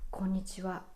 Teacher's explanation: the pitch is almost flat that's why it's called flat pattern